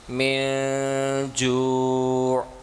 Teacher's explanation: ناک کے اندر اپنی آواز کو فار اے لٹل وائل اس کو آپ نے بند کر دینا ہے، پاز کر دینا ہے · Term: اخفا